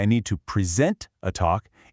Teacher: But when you say, I need to present a talk, it's a verb, an action. The stress shifts to the end. · when you say, I need to present a talk, it's a verb, an action. The stress shifts to the end. It's the exact same spelling, but they're 2 totally different words, and it's all decided by where you put that emphasis.